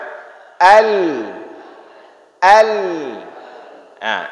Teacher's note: ketika kita baca ujung lidah kita naik ke atas langit, naik ke langit-langit. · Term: huruf lam